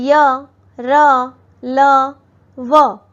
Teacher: य का उच्चारण तालु से होता है, र का मूर्धा से, ल दांतों के पास जीभ यहां टच होती है, व होठ और दांतों की सहायता से किया जाता है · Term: अंतःस्थ व्यंजन